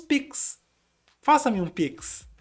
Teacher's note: a gente tem o X fazendo o som de KS